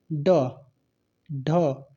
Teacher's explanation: उच्छिप्त व्यंजन के उदाहरण होते हैं, यानी जिसके उच्चारण में जीभ उलटकर तुरंत पीछे गिरती है, यानी ड, ढ।